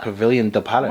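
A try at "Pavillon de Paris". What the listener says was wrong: Well, there's no I there, but it's probably Pavilion de Paris.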